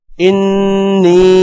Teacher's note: اللہم انی نون پر غنہ ہوگا اور نون کے ساتھ یا ہے، یا پر مد ہے، اس لیے مد کو لمبا کریں گے